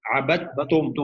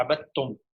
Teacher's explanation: دال جو ہے اس کو ہم تجوید کے قاعدے سے ساکن کر کے اور تا پہ تشدید لگا کے پڑھ رہا ہے